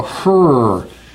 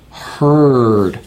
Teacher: notice again with the r my lips are going out